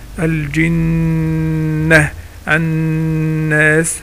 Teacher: الغنة اللي هو الصوت رقيق يخرج من الايه، الخيشوم او الانف